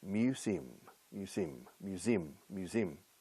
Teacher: Stress the second syllable.